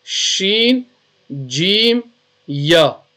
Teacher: Pronounced from the middle part of the tongue touching the middle part of the palate. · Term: Shajariya letters